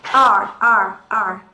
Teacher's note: Và trong tiếng Anh Mỹ thì chúng ta sẽ không có bỏ âm R. Và do đó chúng ta sẽ uốn cong lưỡi lên.